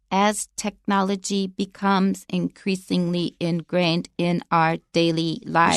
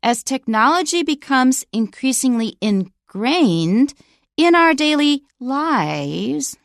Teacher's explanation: so listen for the continuation rise when I read the sentence